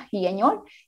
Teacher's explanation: la aspiración de la S prevocálica